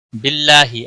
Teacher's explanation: اللہ کے لام کو باریک پڑھیں گے، اللہ کے لام کے پچھلے حرف کے نیچے زیر ہے اس لیے باریک پڑھیں گے۔ اس کے اوپر کھڑی زبر بھی ہے، ایک الف کے برابر کھینچ کر پڑھیں گے، ہی کو کھینچنا نہیں۔